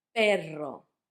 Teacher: You would try to make that R a bit harder with perro when you mean a dog than when you mean pero.